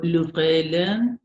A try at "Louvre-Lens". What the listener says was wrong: Lens. Ahí sí se pronuncia la S. Au Louvre-Lens.